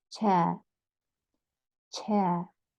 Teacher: Can you see the R? It's not rolled there.